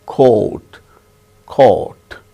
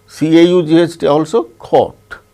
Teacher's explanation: so in all these words we have the sound o elongated o which we have in our indian languages